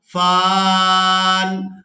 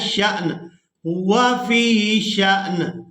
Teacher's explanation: یہاں پر ہم نے فا کو الف مدہ کی وجہ سے کھینچ کر ادا کیا تھا، فان، اور یہاں پر ہم نے شین کو حمزہ ساکن کی وجہ سے جھٹکے کے ساتھ ادا کرنا ہے، شأن، ہوا فی شأن۔